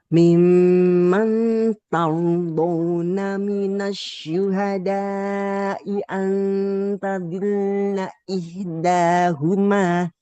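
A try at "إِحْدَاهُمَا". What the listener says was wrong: Coba huruf H-nya Ibu. Kita bertemu dengan H, kemudian H. Maka pastikan dua huruf ini bunyinya terasa sekali perbedaan. Yang satu di tengah, yang satu di pangkal tenggorokan. Hanya tadi sedikit ya. Nah, hati-hati di antara huruf H dengan H. Nah, ini harus beda sekali bunyinya.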